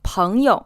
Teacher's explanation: This word is pronounced with the first syllable in the 2nd tone and the 2nd syllable unstressed. Sometimes when you hear this, you might hear it pronounced in the 2nd and 3rd tone, but strictly speaking, the 2nd syllable should be unstressed.